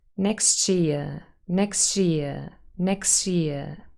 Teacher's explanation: Sometimes people might really say next, and then a sh comes up instead of the s and t. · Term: assimilation